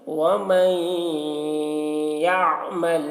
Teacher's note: پر بھی غنہ کے ساتھ میں ومن ادغام اور غنہ ومن یہاں پر ادغام ناقص ہو رہا ہے تو غنہ کے ساتھ میں ادغام کریں گے